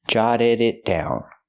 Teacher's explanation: The double T is a fast D, jotted, and the D at the end of the verb is also a fast D.